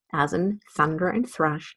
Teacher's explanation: the thorn represents the voiceless dental fricative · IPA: /θ/